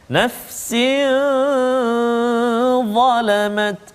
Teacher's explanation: tanwin bertemu dengan huruf dha, salah satu huruf ikhfa kan, nafsin zalamat.